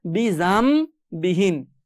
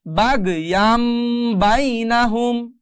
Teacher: নুন সাকিনের বামে বা আসার কারণে মিম দিয়ে পরিবর্তন করতে হবে। বিজান বিহিমটা হয়ে যাবে এখন বিজাম বিহীন।